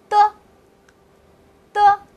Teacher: 学的第一个声母，它就是的。和老师一起来念的的。哎， 在发这个声音的时候呀，用你的舌头顶住你上牙齿的齿背